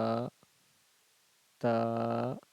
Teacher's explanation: अलिफ बा ता सा जीम हा ख दाल दाल अगर सब अलिफ के मखरज की बात की जाए तो मुंह बिलकुल खुला हुआ होगा माज़रत धन यानी कि मुका खला अलिफ बाों होठ की त का हिस्सा मिलकर के बादा होगा। ता है जुबान की नोक और जो ऊपर का जो दांत है उसके जड़ से जुबान की नोक को सटाएंगे तो तादा हो जाएगा।